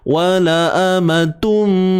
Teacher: Kat sini hukumnya idgham bi gunnah. Idgham, masukkan bunyi tanwin ke dalam mim. Masukkan bunyi tanwin tu ke dalam mim.